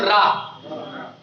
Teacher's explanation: जब आप रा का उच्चारण करोगे ना तो जीव जो है आपकी लुढ़केगी अंदर की ओर। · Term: लुंठित